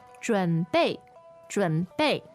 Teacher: So that's third tone, fourth tone.